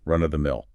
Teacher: be sure to stress the first word